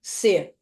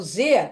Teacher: só curiosidade a surda é quando você vibra as cordas vocais é quando as cordas vocais não vibram então C ó não vibra agora o z vai vibrar